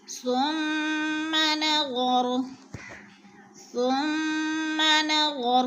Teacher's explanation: ثم کی میم مشدد ہے، غنہ کریں گے، ناک میں آواز لے جائیں گے